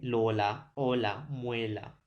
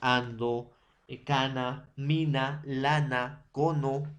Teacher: su lengua, el dorso de la lengua, va a chocar en este caso con los alveolos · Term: alveolares